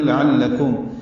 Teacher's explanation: فی ہی، فی یا مدہ ہے، آپ سے الف سے نکالیں گے، جلدی پڑھیں گے. لعلکم، لام باریک عین وسط حلق سے ادا کریں گے